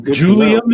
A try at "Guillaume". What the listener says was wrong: Guillaume. You were pronouncing Julian.